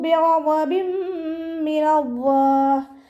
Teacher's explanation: തെൻവീനിന് ശേഷം ഇദാം ബിഉന്നയുടെ അക്ഷരമായിട്ടുള്ള മീം വന്നു. തെൻവീനിനെ മീമിലേക്ക് ലയിപ്പിച്ച ഒന്നയോടുകൂടി ഓതി കൊടുക്കുക. നന്നായി മണിച്ചിട്ട് ഓതി കൊടുക്കുക. · ഗൈന് ഇസ്തിഅലാൻ്റെ ലെറ്ററാണ്, ഉയർത്തിച്ചിരിക്കേണ്ട അക്ഷരങ്ങളിൽപ്പെട്ടതാണ്. ഉയർത്തിയിട്ട് ഉച്ചരിക്കുക.